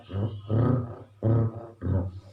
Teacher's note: Kemudian ro, itu berada pada ujung lidah. Tempelkan di langit-langit atas dalam keadaan bergetar.